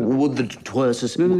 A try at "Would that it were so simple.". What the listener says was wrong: No, you seem to be lingering. It's interminable, the were. I'm wondering when it'll end.